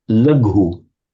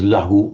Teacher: most often a b or a g will occasionally turn up as just a h in Pali